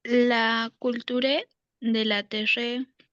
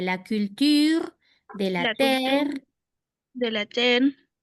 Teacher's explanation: no pronuncio la e final